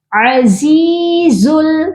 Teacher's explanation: زا کے ساتھ یائے مدہ ہے، اس کو بھی ہم نے ایک الف کے برابر لمبا کر کے پڑھنا ہے